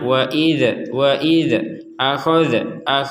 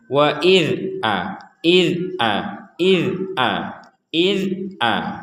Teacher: huruf Dal tidak termasuk huruf-huruf yang dipantulkan jadi sama sekali tidak ada pantulannya